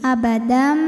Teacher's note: Dam hukumnya adalah idgham bi gunnah karena ada tanwin fathah menghadapi huruf mim. Maka bunyi tanwinnya dimasukkan ke mim. Abadam bunyi m dan tahan bunyi m-nya, dengungkan.